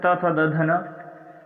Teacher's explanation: तो इसमें त, थ, द, ध, न 5 वर्ण आते हैं। ये दांतों का स्पर्श करते हुए बोले जाते हैं। जब हम इनका उच्चारण करते हैं तो हमारी जीभ जो है वो दांतों को स्पर्श करते हैं, इसलिए इन्हें दंतव्य कहा जाता है।